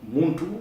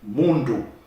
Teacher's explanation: the T and the D are the same phoneme, the same sound. In fact, one is deaf and the other is sonorous.